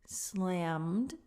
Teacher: the m goes straight into the d sound